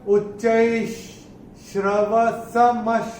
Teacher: विसर्ग के बाद जब श आएगा तो विसर्ग का उच्चारण होगा आधा श। तो यहां पे विसर्ग का उच्चारण होगा आधा श।